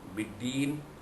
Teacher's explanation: Mad arif disukun di situ, dibaca panjang pada kadar 2 atau 4 atau 6 harakat.